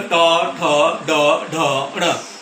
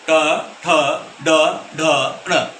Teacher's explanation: दांतों के साथ लगता हुआ हिस्सा है, तालुका है, उससे थोड़ा सा पीछे मूर्धा की जगह है। ट, जब हम ट बोलते हैं हमारी जीभ एकदम से पीछे मुड़ जाती है, ठीक है। तो हम बोलते हैं ट, ठ, ड, ढ, ण। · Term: मूर्धन्य वर्ग